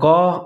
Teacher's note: قاف زبر الف قا دونوں کو موٹا کر کے پڑھا جائے گا، قاف کو بھی الف کو بھی۔ قالوا دال ساکن ہے، قلقلہ کریں گے، حروف قلقلہ میں سے ہے۔